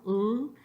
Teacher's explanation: So if you just hold out the sound ul, the L, ul, you can feel that air would come out either side of your tongue